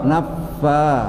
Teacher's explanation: bibir bibir ketemu gigi atas kan gigi seri atas